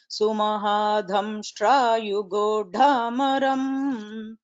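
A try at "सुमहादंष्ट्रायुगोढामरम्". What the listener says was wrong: But that yugodhamaram, that dakara should not become mahaprana. It is double alpa prana dakara. Yugodhamaram, not yugodhamaram. Dha should not come. Yugodhamaram.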